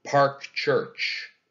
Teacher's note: a spondee and then finally park church that's also a spondy two equally stressed syllables right in a row